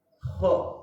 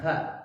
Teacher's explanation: huruf itu ya tebal, pangkat lidah itu harus terangkat sedikit ya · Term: huruf al-isti'la